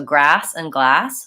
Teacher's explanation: same thing so grass and glass same vowel only difference is with glass I have a front of the tongue lifting for the L and for grass back of the tongue lifting for ER